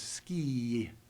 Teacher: you hear a y sound at the end of it